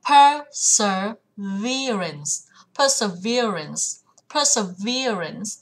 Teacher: trọng âm sẽ vào âm thứ 3